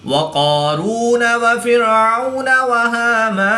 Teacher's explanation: کھڑی زبر کے بعد نون کی زبر کو وقف کی حالت میں ساکن کر دیں گے تو یہاں پر مد عارض ہوگی، 2 سے 3 الف تک کھینچ کر پڑھیں گے